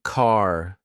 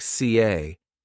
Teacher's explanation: American accent often uses a strong R sound. Words like car sound like car. British accent tends to soften the R. So car sounds more like CA.